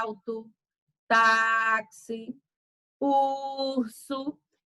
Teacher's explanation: então perceba que a penúltima ela tem o som mais forte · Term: paroxítona